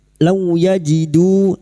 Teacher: law fathah bertemu waw sukun, kita lunakkan huruf lin seperti bertemu dengan huruf abjad u, jangan dibaca o ya, u